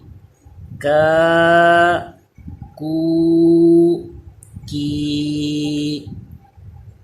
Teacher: next جو کاف ہے اس کو باریک پڑھا جاتا ہے، یہ زبان کی جڑ اور تالو کے سخت حصے سے ادا ہوتا ہے اور باریک پڑھا جائے گا